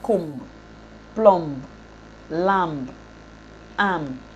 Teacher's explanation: B should be deleted when it occurs after M at word boundary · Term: B deletion rule